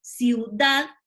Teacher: fíjense ustedes que la carga de voz está en dad